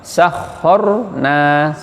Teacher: Khor tebal itu moncong, tafkhim.